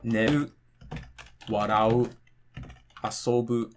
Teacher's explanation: Either the verb is going to be heiban, for example, like neru, warau, asobu. These are all flat.